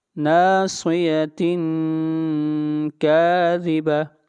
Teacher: آگے چلیے اگلی آیت، نَاصِيَةٍ كَاذِبَةٍ، یہاں پر اخفا کریں گے، آواز ناک میں جائے گی